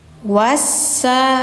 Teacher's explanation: alif ini tidak panjang karena setelahnya ada huruf tasdid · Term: alif lam syamsiyah